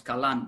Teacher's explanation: it becomes kalan with just a single vowel when it's suffixed